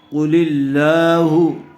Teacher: لفظ اللہ کی لام سے پہلے والے حرف کے نیچے زیر آیا ہوا ہے، اس لیے لفظ اللہ کی لام کو باریک پڑھیں گے، پر نہیں کریں گے۔